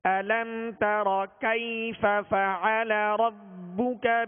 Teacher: أَلَمْ تَرَ، علم شروع میں حمزہ ہے، حمزہ کی سختی ہوگی اور اس کی زبر ادا کرتے ہوئے منہ اور آواز دونوں کھول کر پڑھیں گے